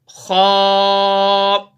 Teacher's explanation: اب خا کا جو مخرج ہے گلے کا وہ حصہ جو منہ کے ساتھ جڑا ہوا ہے، تو اس کو ہم موٹا کر کے پڑھیں گے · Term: مفخم